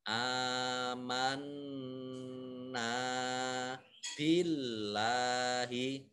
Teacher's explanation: Amanna billahi. Nah ini Allahnya dibaca tipis karena harokat di depannya kasroh. Billahi.